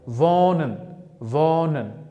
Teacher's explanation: h harfini talaffuzidan tushirib qoldirib, o harfini choʻzibroq talaffuz qilyapman